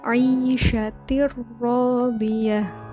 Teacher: huruf ta berharokat tanwin bertemu dengan ro, maka huruf tanwin itu dimasukkan ke dalam ro dengan tanpa dengung. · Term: idgham bila gunah